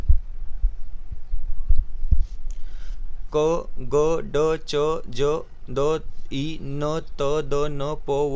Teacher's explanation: अल्पप्राण म्हणजे इथे आपल्याला एच चा उच्चार करावा लागत नाही आहे